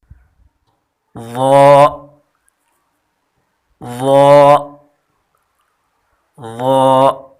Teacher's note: ظا نرم حرف بھی ہے اور پر حرف بھی ہے، یعنی اس کو موٹا بھی پڑھا جاتا ہے، اور ان تینوں کی مخرج ایک ہی ہے، یعنی زبان کی نوک جب ثنایا علیا کے کنارے سے ملے تو یہ حرف ادا ہوتے ہیں، یعنی جب زبان کی نوک سامنے والے دو دانتوں کے کنارے سے ملے تو یہ حرف ادا ہوتے ہیں۔